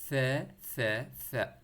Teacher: ث کو آپ نے زبان باہر نکال کے اوپر والے ٹیٹ کے ساتھ ٹچ کرنا ہے اپنے زبان کو